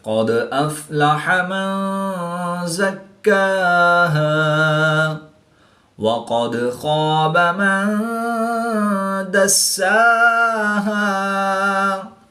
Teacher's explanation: دال ساکن ہے تو یہاں پر قلقلہ صغریٰ کر کے پڑھیں گے، نون ساکن کے بعد زا حروف اخفا میں سے ہے تو یہاں پر اخفا ہوگا یعنی غنہ زمانی کر کے پڑھیں گے۔